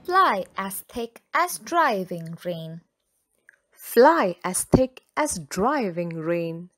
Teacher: The long vowel sound I is repeated in the words fly and driving.